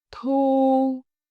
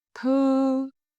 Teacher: Notice how your lip change each time. Rounded for u, flat for ư.